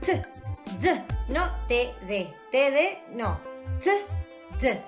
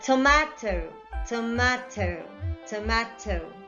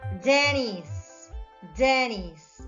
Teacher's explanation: T or d, okay? These sounds are alveolar because they are produced with the tip of the tongue or with the front of the tongue, with the blade of the tongue touching the alveolar ridge.